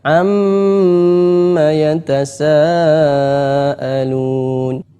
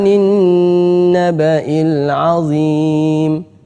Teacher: musyaddadah Hai Jadi kalau ada Amin bertasydid Nun bertasydid Meme bertasydid maka bacaannya ghunnah musyaddadah didengungkan eh dua harokat